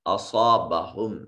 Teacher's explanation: ما الف خالی از حرکت ما قبل مفتوح الف مدہ، اور یہ محل مد کے بعد حمزہ دوسرے کلمہ میں ہے، یہ مد منفصل ہو گئی۔ اصابہم صاد کو مفخم ادا کریں گے، حرف مستعلیہ ہے اور اس کو ایک الف کے برابر لمبا کریں گے۔